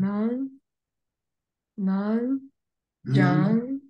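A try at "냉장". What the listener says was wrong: This is Ne, no. If you read this like this, Ne, then it will be Neng. Na e Ang, Neng.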